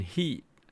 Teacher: The E, like in heat here, has the first formant about less than 500, maybe 300. And then the second one at about 2300 and about 3300.